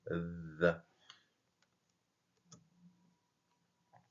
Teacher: nous avons le ZA en mettant bien la langue entre les dents